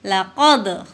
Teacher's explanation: Laqad itu huruf qalqalah ya, karena memantul. Laqad. Nah, itu qalqalah sugro atau qalqalah yang ada di tengah.